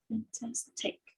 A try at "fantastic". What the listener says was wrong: Fantastic. Fantastic. We don't say fantastic, we say fantastic because the stress syllable is on tas. Fantastic is the second syllable.